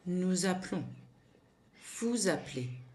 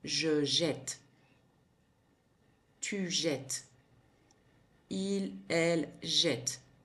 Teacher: This change is also explained by the phonetic. By doubling the consonants, the pronunciation of the E before the L or the T opens up.